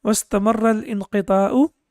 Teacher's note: Wastamarra, so here again Hamza is Hamzatul Wasl, so we don't pronounce it